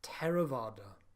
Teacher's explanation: Pali, th, is a single letter pronounced t.